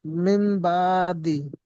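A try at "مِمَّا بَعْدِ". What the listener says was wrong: জি, মিম গুণনা করতে হবে, মিম বাদি।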